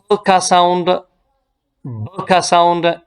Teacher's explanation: So these are sounds using both upper and lower lips. ये ऐसे sounds है जो कि दोनों upper and lower lips से ये प्रोड्यूस होते हैं। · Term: bilabials